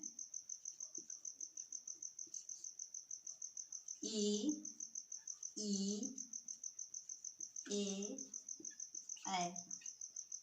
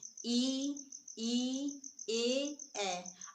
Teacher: जिन स्वरों का उच्चारण करते समय जीभ का अगला हिस्सा या अगला भाग काम करता है उसे अग्र स्वर कहते हैं